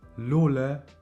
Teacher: The L is pronounced a little more soft in Albanian. I would say it's like an L L sound.